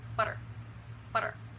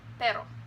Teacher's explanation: The regular R is actually a flap, and is the same sound as in the middle of butter.